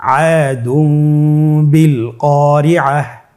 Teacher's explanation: তাহলে আমরা যেটি করব যে তানবিনকে মিম দ্বারা পরিবর্তন করে গুন্নার সহিত পড়ব